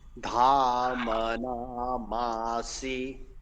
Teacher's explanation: यहाँ पर मकार जो है वो दीर्घ है